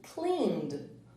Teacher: a gente vai pronunciar apenas o D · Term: som do D